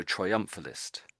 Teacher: So, I missed out the T on the end of it when I said triumphalist.